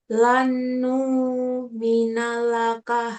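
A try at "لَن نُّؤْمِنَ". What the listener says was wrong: Itu bukan nu tapi nu hamzah sukun.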